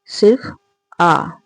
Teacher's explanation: आ जो है वह विवृत स्वर है